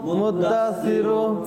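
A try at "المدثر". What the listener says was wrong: সিরু। সিরু আওয়াজ একটু শোনা যাচ্ছে, সিরু হবে না, সি।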